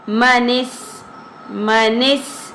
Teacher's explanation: منس، منس سین باریک آواز کے ساتھ